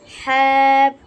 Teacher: হ্যাপ গলার মধ্যখান থেকে আসবে হ্যাপ, একটু চাপ দিয়ে